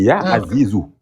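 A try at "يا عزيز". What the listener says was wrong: En fait, en prononçant la lettre à la fin, c'est une mauvaise prononciation. Elle se prononce pas la lettre à la fin. Mais en fait, tu prononces la lettre à la fin, mais il faut pas la prononcer. Tu la prononces pas à la fin, tu dis Ya Rahman, Ya Rahim.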